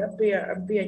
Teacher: âm ơ ở đầu không nhận trọng âm, giống ago, about, đúng không?